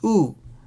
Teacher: if you want to drag it a little bit longer this vowel is called shuruk